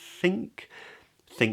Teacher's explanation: thing starts with a voiceless th